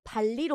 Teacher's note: 리을이 세니까 리을이 니은을 리을로 바꾸는 거야.